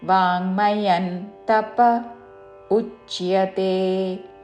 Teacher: వాङ्मయన్ వా దీర్ఘము పక్కన అంగ్కి మావత్తు. వాङ्मయన్ అనుస్వారము తావర్గంలోని అనునాసిక న్ ఉచ్చారణ.